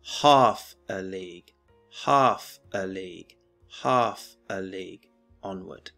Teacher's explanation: is a dactylic foot what do I mean by this well it's three syllables with the first syllable stressed